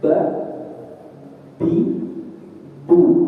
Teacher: Sedangkan ba ya merapat. dua bibir dengan ada tekanan tekanan kemudian dilepas